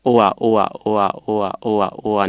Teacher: สระอัวถ้าเกิดว่าเราออกจะเป็นเร็วๆนะครับจะเห็นได้ว่าจะมีสระอูกับสระอาปรากฎอยู่